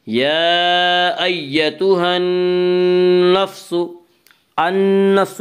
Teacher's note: النفس نون مشدد غنہ ہوگا، غنہ کی مقدار 1 الف ہے۔